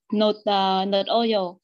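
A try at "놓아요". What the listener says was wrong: Không phải nut oil mà là nơ oil. Cái chữ hò gặp nguyên âm thì thành âm câm. Đọc là nơ oil.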